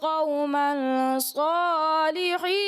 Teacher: غنہ کی مقدار قوم صالحین جو تھا اس میں کم رہی